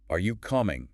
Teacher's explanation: Using a rising tone signals a yes no question.